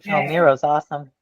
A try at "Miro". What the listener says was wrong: You said mirror, like a mirror?